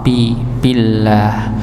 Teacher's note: maka pada lafaz Allah di sini dibaca tipis karena sebelumnya dengan kasrah